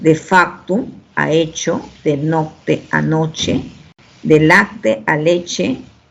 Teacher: el grupo consonántico latino, CT, evolucionó a che.